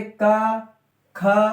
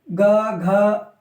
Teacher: देखो अगर हम बोलेंगे का ख, बोल के देखना, का ख नॉर्मल बोल रहे हैं, लेकिन हम बोलते हैं ग घ तो गले में हमारे ज्यादा वाइब्रेशन होती है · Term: सघोष